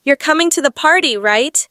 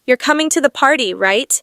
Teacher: question flat falling intonation confirmation you're coming to the party right my voice stays flat or slightly Falls signaling I'm confirming information · if I say it with a rising intonation at the end it's a question but if I say it with a flat or falling intonation it sounds like I'm just confirming something I already know